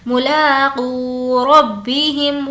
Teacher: لا کو بھی کھینچنا ہے اور قو کو بھی کھینچنا ہے